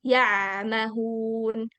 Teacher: ainnya gak diputus suaranya